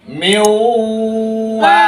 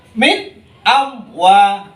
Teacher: Min jadi idhar itu tidak boleh ditahan, dibaca seketika itu langsung berlanjut berikutnya tanpa terputus.